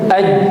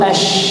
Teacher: Coba dirasa pertengahan lidahnya ketika disebutkan aj, terasa lidah tengah nempel ke atas ya. Tapi berbeda dengan huruf shin, tidak nempel begitu kuat.